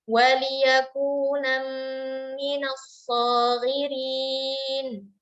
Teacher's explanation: Waliyakuna nam langsung masuk ke makhraj mim. Jadi tidak lagi kita mengangkat lidah kita ke gusi atas di makhraj nun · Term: idgham bi gunnah